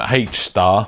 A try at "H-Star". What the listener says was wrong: You know you don't actually pronounce it H.